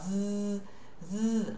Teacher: As minhas cordas vocais, se você colocar a mão na sua garganta, ó, z, elas vibram. Você sente que elas estão trabalhando ali. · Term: TH voiced